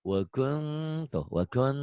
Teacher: Ini mah n-nya masih ada wakuntum, jangan wakungtum, nggak enak didengarnya juga. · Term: ihfa